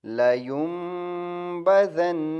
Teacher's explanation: نون مشدد ہے اس لیے غنہ ہوا